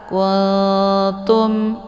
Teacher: Karena nun antar makharijul huruf nun dengan ta itu saling berdekatan ya. Nun posisinya ujung lidah, ta juga posisinya ujung lidah. Maka ketika nun sukun bertemu dengan ta, ini cara bacanya nunnya disamarkan. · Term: ikhfa aqrab